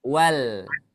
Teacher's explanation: Yang dibaca jelas adalah huruf lam sukunnya. Dia terbaca wal. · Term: Alif lam Komariah